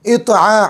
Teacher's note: عین صاف نکالیں گے گلے کے بیچ والے حصے سے